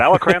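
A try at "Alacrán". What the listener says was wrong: You got to roll that R.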